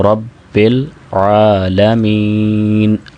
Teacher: یہاں پہ اکثر اب آپ عین کی آواز صحیح نہیں نکال پاتے، وہ حمزہ سے بدل دیتے ہیں اس کو، تو ایسا نہیں کرنا چاہیے۔